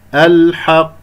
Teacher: لأنه بعد أحد حرف القمرية الحاء المجموعة في إبغي حجك وخف عقيمه، أقف على قاف لقافين مشددة، قاف ساكنة مقلقلة قلقلة كبرى في آخر الكلام